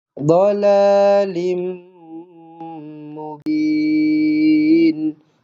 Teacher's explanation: Dhalalim, rapatkan bibir terus, jumpa dengan mim sabdu. Idgham ma'al ghunnah, rapatkan terus bibir.